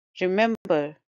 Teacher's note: it's a three syllable word and stresses on the second syllable